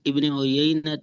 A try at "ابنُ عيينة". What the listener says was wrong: عیینہ نہیں ہے، ابنو۔ قال اخبرنا ابن عیینہ، ایسے پڑھیں.